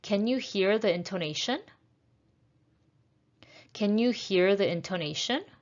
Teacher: again it's a rising one it's a yes or no question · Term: rising intonation